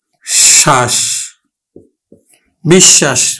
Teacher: ব ফালা যুক্ত বর্ণটি অর্থাৎ তালব্য স টা দুইবার উচ্চারিত করব